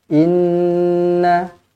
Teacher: Inna, dengungkan dua harakat. Inna, pastikan cukup.